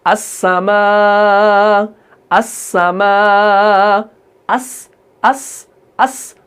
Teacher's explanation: जैसे हम पढ़ते हैं वस्समा। तो सीन को हम ये हल्की सी जो सीटी निकलती है, ये अस्सफीर के अंदर आता है।